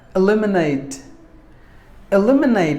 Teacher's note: e lim e nate eliminate we have distressed the second syllable lim should be given more volume than the rest of the syllables